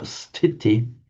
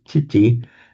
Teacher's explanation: Pali will drop the sibilant, so it becomes titi, and sometimes the T will become retroflex.